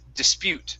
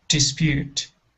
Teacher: Okay, so instead of dispute, the word is dispute. The stress is at the end of the word.